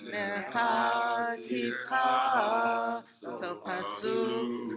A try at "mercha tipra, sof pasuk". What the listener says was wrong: Wait. So I heard a little et nachta there. Et nachta, right? We want to make sure we go sof pasuk. Do it again.